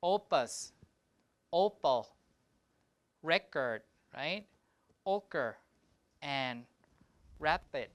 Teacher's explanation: in unstressed positions you have unaspirated P